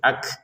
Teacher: Untuk kafnya dikeluarkan nafas sedikit